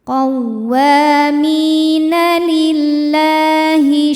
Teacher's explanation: tipis jadi bunyinya la lillahi la hukumnya adalah Mad Thobi'i muqaddar karena huruf lam berbaris fathah panjang maka cara bacanya kita panjangkan lamnya ini dua harakat